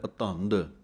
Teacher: ਕੱਸ ਕੇ ਬੋਲਣਾ ਹੈ ਭਾਰਾ ਕਰਕੇ, ਕਿਉਂਕਿ ਦੋਵੇਂ ਧੱਦੇ ਹਨ। ਦੱਦਾ ਨਾ ਲੱਗ ਜਾਵੇ, ਧਿਆਨ ਰੱਖਣਾ ਹੈ।